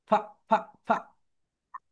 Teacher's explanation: তোমরা যখন এফ উচ্চারণ করবে তোমাদের উপরের দাঁত নিচের ঠোটের সঙ্গে টাচ করবে হালকা